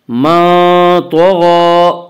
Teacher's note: کھڑا زبر کو ایک الف کے برابر کھینچ کر پڑھیں گے